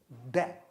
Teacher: जीभ को उलटकर तालू से, कठोर तालू से सटाकर, देखिए ड, झटके से आप पीछे हटाते हैं, ये तो है ड।